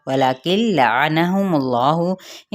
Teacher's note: وَلَكِنْ لَعَنَهُمُ اللَّهُ، ان حرکات کو لمبا نہیں کریں گے لیکن اس میں جلالہ کے لام کو پر پڑھیں گے ، پر پڑھا جائے گا، کیوں؟ کیونکہ اس کے پیچھے پیش